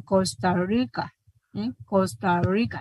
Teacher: notan que la lengua está un poco enrollada verdad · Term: r percusiva